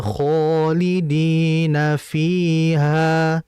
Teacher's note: kho adalah mad asli , dibaca panjang selama dua harakat